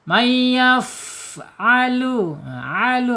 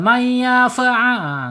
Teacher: May yaffnya ya fanya mempunyai makhraj asyafatain. Ujung gigi seri atas menyentuh perut bibir bagian bawah secara sifatnya alhams ya mengalir